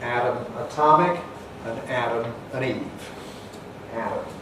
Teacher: the distinction between atom, the small particle, and Adam, the first man, is lost, and we have Adam for both of them. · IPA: /ˈædəm/